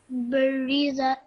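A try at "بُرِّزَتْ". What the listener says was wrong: Just round your mouth a bit more when you say boo, like that. Okay, burizat.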